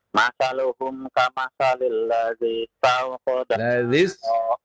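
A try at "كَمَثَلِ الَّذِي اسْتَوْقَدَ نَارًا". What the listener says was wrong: Ladzis tawqada nara, tidak dipanjangkan ya.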